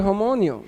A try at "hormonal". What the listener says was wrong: Women are hormonal. You add an extra I. You added an extra Y. I.